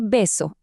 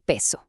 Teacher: La zona es la misma, bilavial, el modo también oclusivo. Lo único que cambió fue la sonoridad. Se activaron las cuerdas vocales.